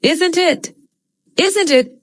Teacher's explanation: T is a stop T. We don't hear it as the end of the phrase